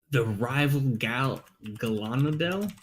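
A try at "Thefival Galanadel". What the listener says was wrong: It was an F, not an R.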